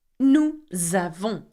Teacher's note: I do the liaison here because avons begins with a vowel